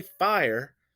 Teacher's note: So you can hear the stress syllable is first. When I say fire, you can hear that the first syllable is stressed.